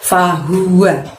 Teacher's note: Di ayat yang ke-7 ada lafadz fahuwa, pendek semua, haknya keluarkan dari tenggorokan bagian bawah ya, lebih tebel ya. Fahuwa, bukan fahu tapi fahuwa.